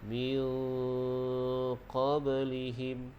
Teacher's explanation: Jadi dengung dua harakat. Dengung pastikan di bahagian pangkal lidah, sebelah dalam. Min qablihim, dan lidah kita tu renggangkan sedikit. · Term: dengung ikhfa